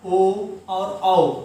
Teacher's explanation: स्वरों को बोलने पर जो ओष्ठ होते हैं वो आगे की तरफ निकल जाते हैं, आगे की तरफ निकल जाते हैं। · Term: वृत्ताकार